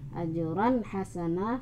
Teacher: Harus jelas. Ajran hasana, fat-hatain bertemu ha, sehingga menjadi izhar. Hasanan, izharnya adalah izhar halqi.